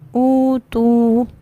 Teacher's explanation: واو ساکن سے۔ تو یہ حمزہ واو سے بدل جائے گا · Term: ابدال